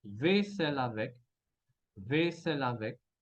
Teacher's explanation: Ahora a vaisselle, escuchamos la L, vaisselle. Y la palabra siguiente empieza por A.